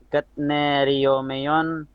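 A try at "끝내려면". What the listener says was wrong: keneriomion ya. Itu bukan ket ya. Ken. Pakai nien. ken. Itu tiet bertemu nien, bacanya nien ya.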